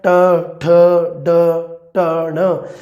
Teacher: ਸਾਡੀ ਜੀਭ ਹੈ ਜਿਹੜੀ ਉਹ ਮੁੜ ਕੇ ਜੀਭ ਦਾ ਥਲੜਾ ਹਿੱਸਾ ਤਾਲੂਏ ਨੂੰ ਟੱਚ ਕਰਦਾ ਹੈ। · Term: ਉਲਟੀ ਜੀਭੀ ਧੁਨੀਆਂ